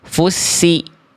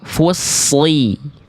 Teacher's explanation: Fu-nya tipis, lamnya tipis, ta-nya tipis. Yang naik pangkal lidah tebal hanya di huruf shad aja. Fu, ketika masuk shad, baru angkat pangkal lidah.